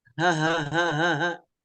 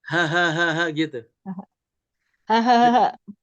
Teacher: Tapi kalau H besar itu seperti orang tertawa. Hahaha. Ada ngebas ke dada.